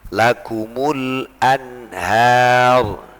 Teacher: Seperti ini tadi, lakumul anhar, tidak boleh lakumul anhar, tidak boleh ya, harus dibaca jelas, lakumul anhar, begitu. Tidak boleh diidghamkan, tak boleh ada diikhfakan samar, tak boleh kemudian ada gunnahnya. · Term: izhar